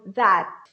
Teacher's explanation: Form the T, but you don't release it. You don't put it out. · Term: held T